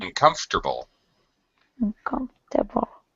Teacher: We don't say uncomfortable. We don't make a 5-syllable word. We make it a 4-syllable word.